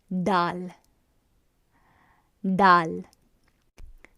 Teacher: the beginning position of the tongue is you taking the tip of the tongue and placing it at the center of the roof of the mouth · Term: harsher d